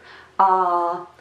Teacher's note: And once more, those are two separate vowels, the short a and the long a. It's pronounced the same way as the short a, but you have to simply pull it longer.